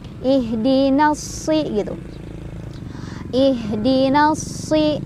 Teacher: alif lamnya tadi tidak dibaca, melainkan kita langsung masukkan ke huruf sodnya ya. Jadi dari nun langsung ke sod ya. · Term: alif lam syamsiyah